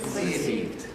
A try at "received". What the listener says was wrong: How do you pronounce this bit? Received. It's not t, d, it's a d sound. Received.